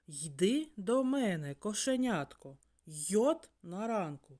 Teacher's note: звук й приголосний а саме найцікавіше що звук й завжди м'який